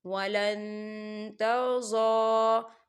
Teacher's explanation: ہم نون ساکن کی آواز کو ناک میں چھپائیں گے۔ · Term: اقفا